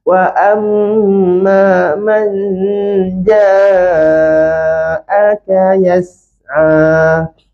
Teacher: Kita nak dengung huruf jim. Jadi masa sebut man tu, bayangkan nak sebut huruf jim. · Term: dengung jim